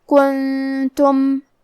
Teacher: یہاں نون ساکن ہے، پھر حرف التا ہے، اور تا حروف الاخفاء میں سے ہے، تو ہم یہ حکم کو غنہ کے ساتھ ادا کریں گے